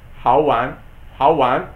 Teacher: the person from the southern part of China will not use the r at the end